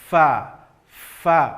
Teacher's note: ujung gigi seri atas tempelkan ke bibir bawah, fa. Maka jelas nanti tampak sifat hamas, mengalir nafas ketika membunyikan huruf fa.